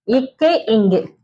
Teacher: நாவுடைய முதல் பகுதி வந்து அண்ணத்தோடைய அடிப்பகுதியை பொருந்துவதால் பிறக்கின்றது